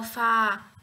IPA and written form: fɑːr (Far)